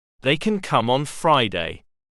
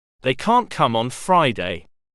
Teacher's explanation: on the other hand when the negative form can't is used we tend to stress the fact that it is the negative form by also stressing can't